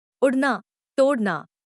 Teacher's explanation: ध्वनि जीभ की नोक उलटकर जब लातू को स्पर्श करती है तब वह पीछे की ओर गिरती है और उसका निचला भाग मूर्धा को छूकर यह ध्वनि उत्पन्न करता है। यह सघोष, अल्पप्राण, मूर्धन्य, उत्प्रेक्षित ध्वनि है।